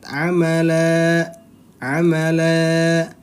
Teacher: berarti dia Mad iwad bacanya panjang dua harakat